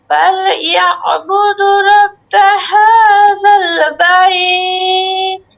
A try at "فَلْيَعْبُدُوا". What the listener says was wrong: আপু فليعبدوا টান এক আলিফ টান আছে فليعبدوا رب هذا البيت